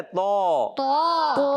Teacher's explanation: طوا نہیں پڑھنا, یہ پڑھتے ہیں طا. کیا ہے؟ طا. موٹا بھی رکھنا ہے